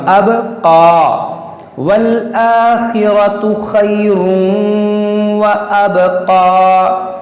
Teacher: یہاں پر دیکھیں تنوین کے بعد واو ہے, یہاں پر ادغام ہوگا اور یہاں پر قلقلہ ہوگا با میں